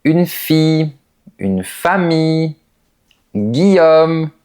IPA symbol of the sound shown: ij